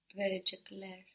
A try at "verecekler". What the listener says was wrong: Verecekler. Very good. Very good.